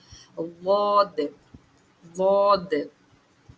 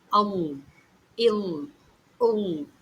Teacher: நாவின் ஓரம் மேல் கடவாய் பற்களின் வேரை தொடும் பொழுது ஒலிக்கப் பெறுகின்றது வாது.